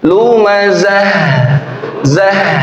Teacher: Huruf H sukun, ya, H berfathah, ha, hi, hu, kemudian sukun, kemudian tak marbutoh waqaf jadi ha sukun, itu ada sifat namanya rakhawah, ngalir dia punya suara. Lumazah, zah, nah ngalir ya, zah.